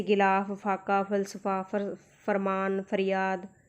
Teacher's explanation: जब हम उर्दू भाषा वाले फ का उच्चारण करते हैं तब हमारा जो नीचे वाला होंठ है वो अपने दांतों को छूता है